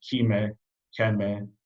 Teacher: The more conservative Sahidic dialect has the heavily palatal sound Kime, Keme, but in Baharic we have Shahime, an aspirated palatal sound.